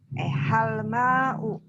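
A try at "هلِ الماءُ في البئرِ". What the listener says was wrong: Enggak boleh begitu, Bu. Kalau bacanya hal ma'u berarti alif lamnya hilang. Ya, begitu cara membacanya. Hal al-ma'u. Supaya tidak repot, maka itu jadinya halil ma'u.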